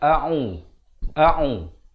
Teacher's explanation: Pertamanya dia berhampiran dari segi makhrajnya. Hamzah makhrajnya di pangkal kerongkong. Manakala ain makhrajnya di pertengahan kerongkong. Jadi bunyinya a'u.